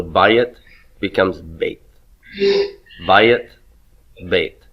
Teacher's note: my AY diphthong can contract and become the sereyod